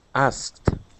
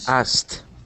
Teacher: so we skip over that K and we say asked